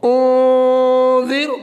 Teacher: ذال دونوں دانتوں کے درمیان سے ادا ہوگا